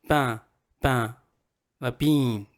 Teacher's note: when you're saying a vowel sound, you don't just say it with your mouth, you say it with your nose as well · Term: nasalization